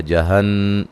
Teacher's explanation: نون مشدد بے غنہ ضروری ہے